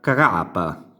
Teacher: la R come dalla fine della parola si va a spostare quasi all'inizio